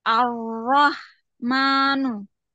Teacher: ar-Rahmanu, Getarannya hilang. Tebalnya dapat tapi getarannya nggak ada. Ar, ar-Rah, ar-Rahmanu, nggak, getarannya hilang.